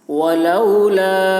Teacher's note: لام میں مد ہے، کھینچیں گے اس کو